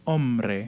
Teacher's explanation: we see a dissimilation where the n becomes an r